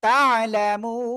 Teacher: তিন আলিফ টেনে পড়বো